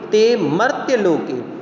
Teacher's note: ते में गुरु है, मर्त्य संयुक्ताक्षर से पूर्व होने के कारण से म गुरु और य लघु